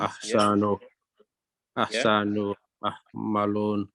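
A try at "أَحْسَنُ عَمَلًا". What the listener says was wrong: Amala. Yeah, so here yeah, don't say ahsanu, yeah, don't stretch the halaka, okay? It'll be ahsanu amala. Ahsanu amala.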